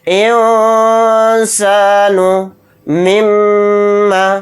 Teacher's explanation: میم کے اوپر تشدید ہے تو میم میں غنہ کر کے پڑھیں گے